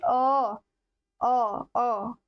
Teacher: हिंदी में अ स्वर केंद्रीय स्वर है